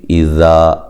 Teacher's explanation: ذال الف مدہ ہے، ایک الف کی مقدار کے برابر لمبا کیا جائے گا